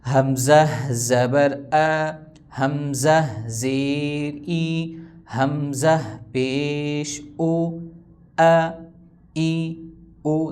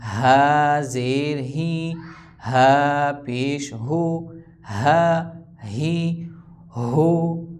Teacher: حمزہ اور ہا ان کا مخرج ایک ہے، مطلب دونوں گلے سے نکلتے ہیں، لیکن ان کی آواز میں فرق ہے. حمزہ کی آواز آ کی صورت میں آئے گی، ہا کی آواز ہا ہی ہو کی صورت میں.